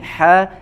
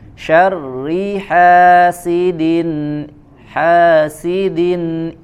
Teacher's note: syarriha ya bedakan lagi dengan huruf H ya Yang ini ha dibaca lebih terasa aliran nafas dan suaranya yang kemudian makhrojnya dari wasyatul helq